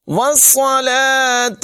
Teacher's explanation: صاد کو پر پڑھیں گے سیٹی کے ساتھ